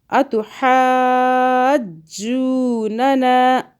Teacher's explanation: ہا کو حلق سے پڑھنا ہے